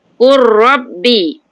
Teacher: Betul, masukkan. Jadi, kita baca, lam tu masuk. Lam itu kosong kan, lam kosong. Terus masuk ra.